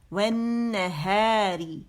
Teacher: اگر میں واو سے ملاؤں گی تو ون, تو حمزۃ الوصل بھی ڈراپ ہو گیا، لام بھی ڈراپ ہو گیا، اور صرف مشدد نون پڑا جائے گا